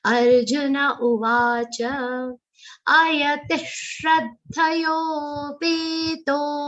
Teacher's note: The visarga will sound like sha because it's followed by shra. Shra consists of sha and ra.